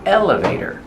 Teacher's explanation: Put the stress on the first syllable. Elevator. And the T is pronounced as a fast D.